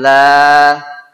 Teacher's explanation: kalau suaranya datar betul kalau naik agak salah